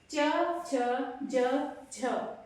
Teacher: आपकी जीभ का सेंटर वाला भाग बीच का भाग ऊपर जाकर टच हो रहा है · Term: तालु